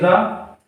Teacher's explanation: लुंठित व्यंजन क्यों कहते हैं ये हम पिछली क्लास में देख चुके हैं, क्योंकि इसका उच्चारण हमारी जो जीभ मूर्धा से टकराकर वापस झटके से बाहर आती है, इसलिए इसको लुंठित व्यंजन कहते हैं।